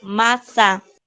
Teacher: Si tiene la sílaba tónica en la penúltima sílaba.